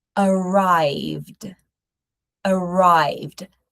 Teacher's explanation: we're going to have a last sound as a D sound with no extra syllable